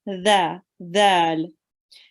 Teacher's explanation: And when you pronounce it, the way you pronounce it is the tip of the tongue slightly comes out of the mouth like tha, but there is more vibration, and the tongue is pressed against the edge of the upper teeth, and slight air should escape. So you have to touch your tongue to your upper teeth and make it come out really soft.